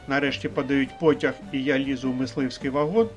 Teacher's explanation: тон підвищується в кінці першої частини перед сполучником і а характерне для розповідного речення пониження тону відбувається тільки в кінці другої частини що означає інтонаційно завершеність складного речення а зараз в рамках підготовки